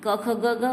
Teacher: क ख ग घ वह कंठ के द्वारा उन वर्णों का उच्चारण होता है।